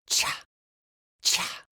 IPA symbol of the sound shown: ch